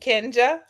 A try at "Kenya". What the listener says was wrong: Hi, look, it's Kenya. The J is silent.